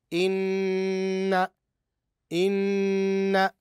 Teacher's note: ادغمت النون الاولى الساكنه في النون الثانيه المتحركه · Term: النون المشدده